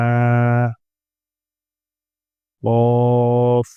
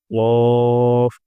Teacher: قاف، منہ بھر کے ادا ہوں گا